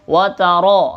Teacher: Tebal karena masuk ro-nya ro tafkhim.